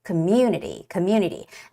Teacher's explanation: the stress goes on the vowel U